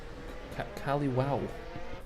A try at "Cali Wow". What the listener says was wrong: No, it's Cali. Wow. Yeah, I have to emphasize the O.